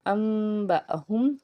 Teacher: انبأہم، نون کے بعد میم کا سائن آپ کو نظر آ رہا ہے، یعنی کہ اقلاب ہے، نون کو نہیں پڑھیں گے بلکہ میم کو ادا کریں گے اور غنہ کریں گے